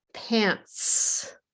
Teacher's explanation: And you'll notice if you do this, that pant, the T sound, there's no vibrate. So in the plural, it is also no vibrate, the S sound, pants. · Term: no vibrate sound